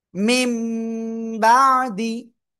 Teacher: তো এখানে নুন সাকিনের পরে দেখেন র কি আসছে মির রব্বিহিম র আসছে নুন সাকিনের পরে এজন্য আমরা কি করবো গুন্না ছাড়া মিলিয়ে পড়বো ক্লিয়ার এরপরে ইকলাবের অক্ষর একটি বা নুন সাকিন বা তানবিনের পরে এই বা অক্ষর আসলে ওই নুন সাকিন বা তানবিনকে মেম দ্বারা পরিবর্তন করে পড়তে হয়